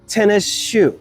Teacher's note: it's not so much that the S at the end of tennis is being dropped as much as it is being merged with the S at the beginning of shoe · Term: haplology